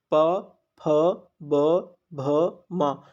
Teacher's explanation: जब आप लोग प फ ब भ म बोल रहे हैं तो आपके दोनों लिप्स जो है यूज हो रहे हैं, इसका मतलब यह उच्चारण स्थान इसके ओष्ठ हैं।